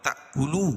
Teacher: الی الحکام لتأکلوا، یہاں بھی جھٹکا ہو رہا ہے، یہ حمزہ الف کی شکل میں ہے اور اس کے اوپر جزم ہے تو جھٹکا ہو رہا ہے